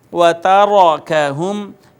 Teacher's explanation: را کے اوپر زبر ہے تو اس کو ہم موٹا کر کے پڑھیں گے